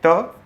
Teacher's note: त वर्ग के सभी वर्ण जो हैं ये किससे उच्चारित होते हैं? तो ये उच्चारित होते हैं हमारे दांत से, इसलिए इनको बोला जाता है दंत्य।